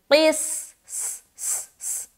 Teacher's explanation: سین میں ملاتے ہوئے سین کی آواز ظاہر ہوگی، سیٹی والی جو صفت ہے نا وہ ظاہر ہو جائے گی